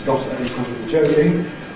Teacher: all kinds of English have a rule reducing two [t]’s to one in [ˈgɒt tə]. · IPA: [ˈgɒtə bi ˈʤəʊkɪŋ]